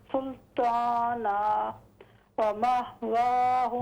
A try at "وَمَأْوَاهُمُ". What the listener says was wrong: مہ نہیں ہے یہ حمزہ ہے ہاں نہ پڑھیں حمزہ ومأواهم